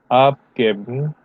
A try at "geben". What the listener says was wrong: Geben has a long vowel. Geben. Geben. Abgeben.